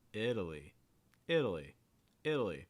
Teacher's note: starting with the short i sound then getting a fast d sound and a schwa and then finishing with that long eye